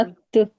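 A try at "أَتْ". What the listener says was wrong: ठीक है, अत नहीं करना, आवाज को नहीं पलटाना, सांस सिर्फ थोड़ी सी जारी करनी है आखिर में। अक, अक, आवाज, आवाज सांस के साथ जो खुद ब खुद सांस की आवाज है बस की। ये जो आप अक कर रहे हैं ना, अत, ये सांस की आवाज है।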